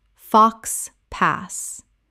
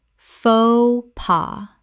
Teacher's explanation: Two syllables, both the X and the S are completely silent in this French phrase.